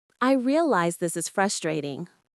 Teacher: Pay attention to the stress on the word frustrating.